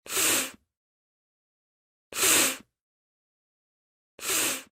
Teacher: the f is a continuous sound, so you should be able to stretch it out, like this.